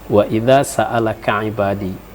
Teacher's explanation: Cuma sedikit makharijul huruf wa idza itu diperbaiki karena zal itu adalah di ujung lidah sedikit menyentuh gigi atas